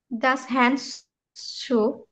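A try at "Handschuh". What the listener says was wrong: ডাস হান, হান সুক, হান হ্যান্ড না, হান সুক।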